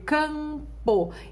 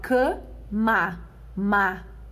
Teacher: estas consoantes MN, elas não possuem som. Elas apenas servem como nasalizadores destes elementos, destas vogais. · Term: dígrafo vocálico